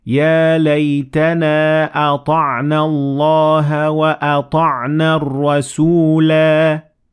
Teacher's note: So the alif is pronounced because I stopped at the end of the word.